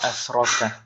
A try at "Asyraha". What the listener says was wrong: Pakai shin, Ustaz. Ya, kemudian pakai ha. Ya, asyraha.